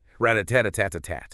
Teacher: almost every syllable gets the same amount of time. It sounds very even, kind of like a machine gun.